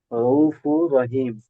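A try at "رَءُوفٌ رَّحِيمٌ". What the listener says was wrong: জি, রউফুর র যাবার র, রউফুর র, ইয়া মিম জের হিম। আচ্ছা, এখানে তানবিনটা সাকিন করতে হবে না, এখানে ওকে ওই কায়দা আসেনি। তো হাইয়া জের হি, মিম দুই পেশ মুন, রহিমুন।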